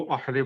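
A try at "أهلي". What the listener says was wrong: अहली, नहीं अहली, अहली वो हा अलग होता है, ठीक है, वो हमद वाला हा होता है, ये हा है अहली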